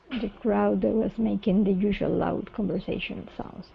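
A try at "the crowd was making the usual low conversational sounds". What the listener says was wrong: low low instead of loud low low there you go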